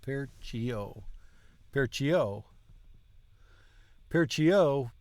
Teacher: got to accent stress the last syllable